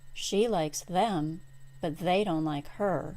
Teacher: the pronouns them and her cannot be pronounced M and R when they are stressed in a sentence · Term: double pronoun contrast